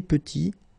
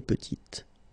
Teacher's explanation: Final T is not pronounced